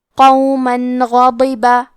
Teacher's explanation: کلمت غاضبہ میں حرف الغین کی ادائیگی حلق کے اوپر والے حصے سے ہے. غین حروف تفخیم میں سے ہے تو ہم یہ حرف کو موٹی آواز میں پڑھیں گے.